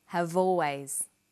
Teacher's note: in conversation we link the final consonant sound v with the initial vowel sound